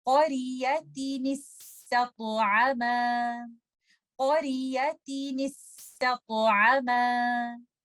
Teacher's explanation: letter तो heavy है, इस पे हमें कलकला भी करना है